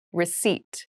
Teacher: there is a p in the spelling of this word but we do not pronounce it